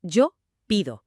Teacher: La presión de la voz está en la i.